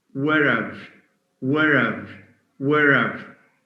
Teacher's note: wherever in other words the the her sound is dropped plus the a sound as in cat becomes a schwa · the ha sound is dropped, plus the a sound, as in cat, becomes a schwa. That's why in spelling, even in spelling, we write were, apostrophe, ve. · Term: weak form